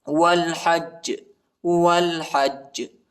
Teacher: یہ جیم پر جو ہے زیر آیا ہے، ادھر ہم وقف کرتے ہیں، تو وقف کی صورت میں ہم اس طرح پڑھیں گے، غور سے سنیے۔ والحج جیم پر جو ہے ہم قلقلہ کریں گے، ٹھیک ہے، جیم کو جھٹکے کے ساتھ پڑھیں گے